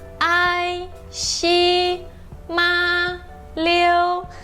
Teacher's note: Todas essas sílabas estão no primeiro tom, que é alto, liso, uniforme, tá bom? No final não desce nem sobe.